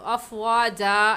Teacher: زبر کی تنوین میں جب آپ وقف کریں گی تو ایک الف پڑھا جائے گا، تو افواجا ایسے رکیں گے۔